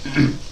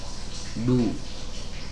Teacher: Ingat, ketika huruf dal atau huruf apapun, ya, berharokat dhammah, maka saat kita beralih ke dhammahnya, ya, saat kita beralih ke harokat dhammah ini, bibir kita harus dimajukan. Harus maju sempurna.